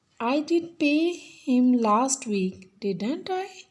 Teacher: Rising intonation at the end